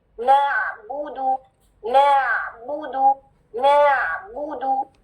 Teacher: 1 count, क्योंकि हरकत है ना, लंबा ना हो जाए ना